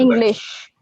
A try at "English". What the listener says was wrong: I think you have a little bit of problem with the S sound and the sh sound, right? No, that's the first one, English. Yeah, sh sound, exactly. yeah, because sh is a sh sound, right?